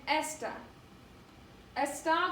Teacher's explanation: the emphasis is put on that last vowel the last a